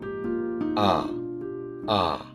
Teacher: এ আ হচ্ছে এটি একটি মধ্য, জিহ্বার মধ্যভাগ থেকে উচ্চারিত হয়, নিরপেক্ষ, এখানে ঠোঁট নিরপেক্ষ থাকে, ঠোঁট একদম ছড়ানো থাকে, কোনো দিকে প্রসারিত কিংবা চোখা থাকে না